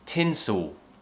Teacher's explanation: imagine you're not completely pronouncing the L. It almost feels like we're just producing a vowel sound. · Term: dark L